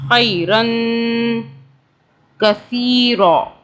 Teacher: را کے اوپر تنوین ہے تو ہم 2 سیکنڈ کے لیے غنہ کریں گے